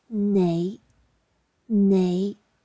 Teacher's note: tone five rising low to mid pitched